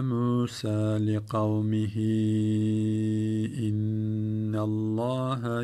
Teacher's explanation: Kâle Musa li kavmihi derken hi'yi çektik. Metni munfasıl olmuş.